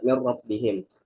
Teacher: Mirrobbihim ro-nya syiddah karena sebelumnya ada nun mati min. Akan tetapi ro-nya tidak dibaca dengan dengung. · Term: idgham bila gunnah